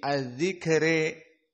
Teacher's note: Fatanfa'uhu dzikra, dan adzikra dibaca dalam keadaan al-imalah as-sughra, dibaca menjadi adzikre